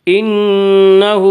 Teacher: नून मुशद्दद गुन्ना होगा, गुन्ना की मिकदार 1 अलिफ है